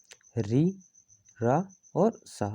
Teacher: री रा और सा आते हैं मूर्धा में